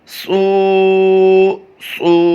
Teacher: اس وقت جو آپ اپنی اسکرین پر دو حرف دیکھ رہے ہیں وہ صاد سے ہیں، صاد حروف مستعلیہ سے ہیں، آواز کو پر بھی کریں گے اور اس کے ساتھ ساتھ ہونٹوں کو گول کر کے اس کی ادائیگی کریں گے